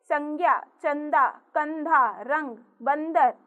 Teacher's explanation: अंग को अनुस्वार कहते हैं। इसका उच्चारण नाक से होता है।